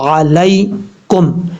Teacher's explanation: اب یہاں پر عین کو آپ نے مخرج سے ادا کرنا ہے، حمزہ کی آواز نہیں آنی چاہیے۔ لام کے بعد جو یا ہے یہ یا لین ہے، اس کو پڑھتے ہوئے لانگ نہیں کرنا ہے، اس کو شارٹ کٹ پڑھنا ہے